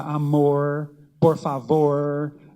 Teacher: ele situou esses falares no interior de São Paulo com R retroflexo